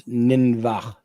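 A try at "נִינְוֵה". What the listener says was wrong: Ninve. that's a hey. That's not a chet.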